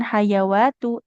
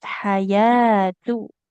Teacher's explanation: ya-nya fathah ketemu alif kecil panjang dua harokat. Jadi bukan hayawatu tapi hayatu.